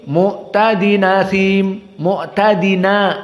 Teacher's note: Hamzahnya dihapus dan harokatnya dinakalkan kepada nun. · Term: an-naql